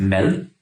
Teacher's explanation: And everyone in Scandinavia agrees this is a little bit wild. See, Danish has this unique sound that is supposed to be a D, but it doesn't sound like a D. It sounds more like an L.